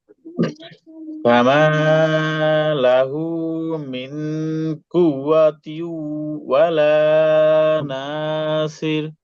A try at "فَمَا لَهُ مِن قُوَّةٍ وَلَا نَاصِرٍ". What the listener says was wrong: হ্যাঁ ভাই, আপনাদের এই ইকফা গুণাটা একটু ওয়াজিব গুণার মতো হয়ে যাচ্ছে। ইকফা গুণাটা একটু নাকের ভিতরে গুণা করতে হবে। মিং মিং। সিরটা ভাই আর একটু ইয়ে করেন, সির। সির না ভাই, সদ সদ, সির সির।